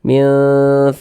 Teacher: huruf ra memiliki harakat kasrah maka dia dibaca tipis baca tarkik sehingga kita tipiskan huruf rnya minsamarihi wa Hi dibaca panjang tanda